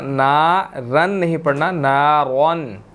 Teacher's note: रॉ यहाँ पर मोटा है, यहाँ पर इसके ऊपर 2 ज़बरें हैं, तो हमने इसको मोटा अदा करना है, बारीक नहीं पढ़ना